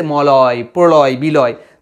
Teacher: ল বলার সময় আমাদের দুপাশ দিয়ে হাওয়া বের হয়ে আসে